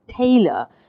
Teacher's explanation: you hear tay louder than uh that's because of stressed